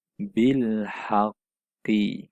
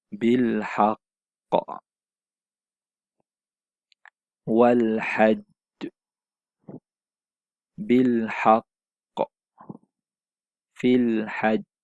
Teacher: Bacaan qalqalah dibunyikan sedikit lambat.